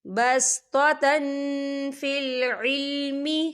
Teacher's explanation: ہم یہاں اکفا کریں گے، تنوین کی آواز کو ناک میں چھپائیں گے